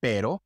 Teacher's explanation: The soft sound which is like the fast D sound in English